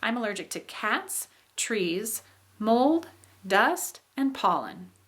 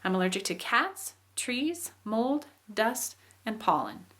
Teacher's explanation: when we make lists of things, we have kind of a rising, it goes up, up, up, and then the last thing that we are interested in expressing comes down. So it's called a non-final intonation contour. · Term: listing contour